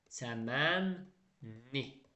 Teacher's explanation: Amma L samiti N-dan sonra gəlsə, N-dan sonra onda L N kimi tələffüz olunur. L N-ya çevəcək.